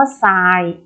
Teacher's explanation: ทรเปลี่ยนเสียงเป็นซอ